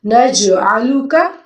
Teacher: عین کو ہم حلق سے ادا کریں گے، جیم پہ ہم کلکلا کریں گے۔